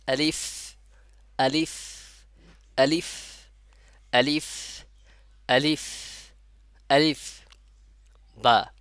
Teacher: উপরে দাঁত এবং নিচের ঠোঁটের পেট থেকে আলিফের উচ্চারণ হয় এবং আলিফ উচ্চারণের সময় বাতাস জারি থাকবে